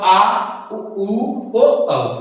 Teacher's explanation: पश्च स्वर जो जीभ के पिछले भाग से बोले जाते हैं उसे हम पश्च स्वर कहते हैं।